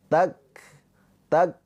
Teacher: Tertahan. Tak, baru keluar percikan nafasnya. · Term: kaf sukun